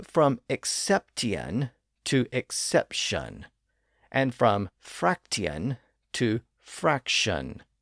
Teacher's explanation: English had words like exception and fraction but during the 1500s that Tian ending started to slur into shun